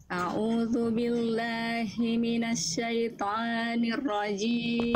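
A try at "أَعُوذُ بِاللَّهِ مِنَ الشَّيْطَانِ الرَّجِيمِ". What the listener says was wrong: Oke, huruf to. Jangan toa, toa. A'udzu billahi minasyaitoni. Toni. Toni. Jadi jangan toni, toni, toni. Toni. Nah, tapi jangan jadi kepanjangan. Tapi jangan jadi kepanjangan ya. A'udzu billahi minasyaitonir rajim.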